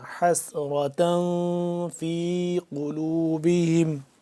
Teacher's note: تنوین پہ ہم نے کیا کرنا ہے، اخفا کرنا ہے، ناک کے اندر لے جا کر پڑھنا ہے اس کو